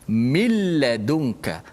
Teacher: Suara nun dah tak ada pada bacaan. Dia hanya ada pada tulisan sahaja. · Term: idgham bila gunnah